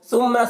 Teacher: ثا کو باریک پڑھیں گے، میم مشدد، میم میں غنہ کریں گے